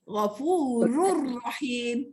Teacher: Idgham bila gunnah iaitu nun sakinah dan tanwin yang bertemu dengan huruf lam dan ra. Nun mati dengan tanwin bertemu lam ra. Tak ada dengung kan?